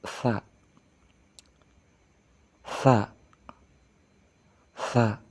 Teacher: dengan ujung lidah menempel pada ujung gigi bagian atas tanpa memainkan atau mengkerungkan bibir bagian bawah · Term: huruf sa